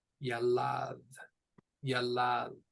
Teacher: It is pronounced yalad, yalad. So we've got 2 syllables. The stress goes on the second one.